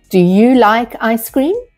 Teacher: Typically, the voice rises at the end of the question, signaling to the listener that a response is anticipated.